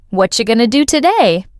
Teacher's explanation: The T at the end of what connects with the A in are, becoming whatcha. Going to becomes gonna. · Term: connected speech